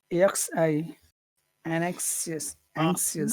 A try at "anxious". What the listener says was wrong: No, I think I disagree with you. I think it's the first syllable. Anxious. Anxious. Anxious. Anxious. Anxious. Anxious.